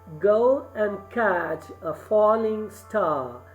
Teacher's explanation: there is one accentic syllable or one stressed syllable followed by one unstressed. So if you read it, you will give stress on go and not on and. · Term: trochee